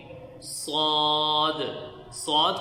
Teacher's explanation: یہ موٹے حروف میں سے بھی ہے اور اس میں سیٹی کی آواز بھی آنی چاہیے